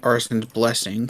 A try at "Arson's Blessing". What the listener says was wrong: It keeps sounding like you're saying arsonist's blessing.